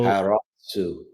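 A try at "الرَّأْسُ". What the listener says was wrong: this is not ha, right? al-ra'su. Al-ra'su. Al-ra. Al-ra'su. Don't your tongue's not involved in making this sound, right? Once the R sound, it's only just the vocal cords closing.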